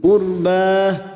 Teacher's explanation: ra sukun yang didahului dumah, kita baca tafkim